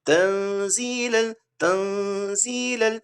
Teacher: تو یہ نون کو اخفا مطلب ٹو ہائڈ، ہم کو اس کو ناک میں لے جانا ہے اور چھپانا ہے، نون کی آواز کو چھپانا ہے